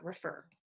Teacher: and then this guy is a stressed version of er so you can have an unstressed and a stressed version of er so in refer it's stressed